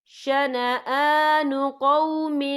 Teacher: یا دیکھیں شنآ، حمزہ کے پر کھڑی حرکات ہے، تو ہم یہاں 2 یا 3 حرکت کے برابر کھینچیں گے